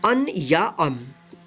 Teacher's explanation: इस बिंदी का उच्चारण कहीं कहीं पे आधा म होता है तो कहीं कहीं पे आधा न होता है, यानी अनुस्वार इसको बोलते हैं।